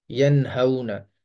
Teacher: حروف حلقی میں، یہ لکھا ہوا ہے، یہ حروف حلقی کے جو 6 حروف ہیں ان میں سے ہا بھی ہے، تو لہٰذا یہاں پر غنہ نہیں ہوگا، یہاں پر اظہار ہوگا